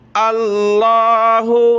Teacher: اللہ لا الہ الا ہو، اللہ، لفظ اللہ سے پہلے والے حرف پر زبر ہے تو لفظ اللہ کو ہم نے موٹا کر کے پڑھنا ہے۔ اللہ، لام پر مد ہے، اس کو ہم نے کھینچنا ہے